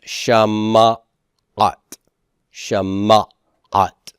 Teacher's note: this silent shava is going to be converted to a pathak, and it becomes Shama'at